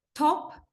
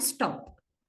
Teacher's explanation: But regarding stop, this t is not aspirated. Although it occurs in front of a vowel sound, it is not in the initial position of a word.